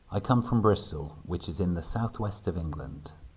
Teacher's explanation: Notice that the words which is in are all connected, as are the words west of England.